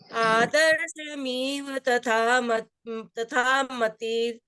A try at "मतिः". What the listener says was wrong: मतिर नहीं बोलना, अभी तोड़ के बोल रहे हैं, तो मति ही विसर्ग और फिर शब्द है अवेति। आदर्शमिव तथा मतिः